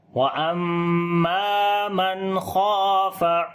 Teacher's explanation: نون ساکن کے بعد خا گئے، اظہار حلقی کریں گے، نون کی آواز کو ظاہر کر کے پڑھیں گے اور نون کے اوپر صفت توسط بھی ہوگی، ہلکی سی آواز کو کنٹینیو کریں گے۔